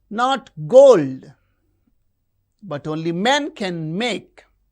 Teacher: Not gold but only men can make. You can see in this line gold men make. These words are stressed.